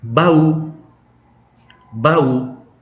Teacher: tekannya di U, artinya peti